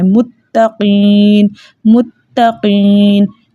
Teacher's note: قاف کو موٹا رکھنا ہے، تا کو باریک رکھنا ہے، لیکن مضبوطی کے ساتھ پڑھنا ہے کیونکہ اس تا کے اندر 2 حروف موجود ہیں، ایک ساکن تا اور ایک متحرک تا. · تا مشدد ہے تو اس کو ہم جماؤں کے ساتھ پڑھیں گے، مضبوطی کے ساتھ پڑھیں گے، لیکن اس کا ہرگز یہ مطلب نہیں کہ ہم اس تا کو طا پڑھ دیں.